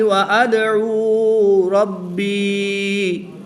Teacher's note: دال حروف قلقلہ میں سے ہے اور با بھی حروف قلقلہ میں سے ہے۔ با مشدد ہے تو اس میں قلقلہ کبریٰ، دال ساکن ہے تو اس میں قلقلہ صغریٰ کر کے پڑھیں گے